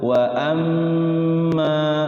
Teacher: Mim tasydid itu hukum tajwidnya adalah gunnah, harus ditahan dulu.